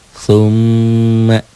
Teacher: nun dan mim bertasdid ini juga dibaca dengung ke hidung. Itulah gunnah. · M-nya, mimnya bertasdid. Summa, ya, ditahan, double dan dengung. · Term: huruf gunnah